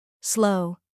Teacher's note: Feel how your lips round forward slightly. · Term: long O sound